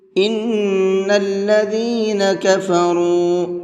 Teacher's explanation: ان کے نون کے اندر غنہ کریں گے، اور کفروا کے را کو منہ بھر کے پڑھیں گے، اور ساتھ ساتھ کھینچ کر کے بھی پڑھیں گے، اس لیے کہ یہاں پر واو مدہ ہے۔